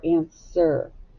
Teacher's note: the w is silent and on the end you hear the r controlled sound er